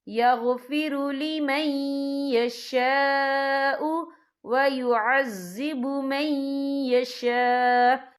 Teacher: یہاں دیکھیں یغفر لمن یشاء، یہاں خالص سے پہلے زبر ہے اور اس پر مد بھی ہے. یہ مد جو ہے مد متصل ہے، اس کی مقدار 4 حرکت کے برابر ہے، تو ہم اسے 4 حرکت کے برابر کھینچ کے پڑھیں گے